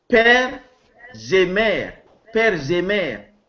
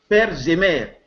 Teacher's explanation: And the only explanation is that père normally in the past ends with S sound, and because S sound, this S sound is in between two vowels, it turned out to be Z. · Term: liaison